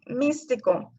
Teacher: Después tenemos palabras esdrújulas, que son las que tienen la sílaba tónica en la antepenúltima. Por ejemplo, místico, la sílaba tónica es mis.